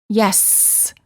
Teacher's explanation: with the letter s we can prolong it by saying yes the S sound is considered a continuent because the air flow can continue as long as we have air in our lungs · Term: continuant